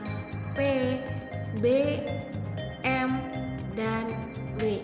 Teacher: konsonan yang dihasilkan dengan mempertemukan kedua belah bibir yang bersama-sama bertindak sebagai artikulator, dan titik artikulasi bunyi yang dihasilkan ialah P, B, M, dan W. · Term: konsonan bilabial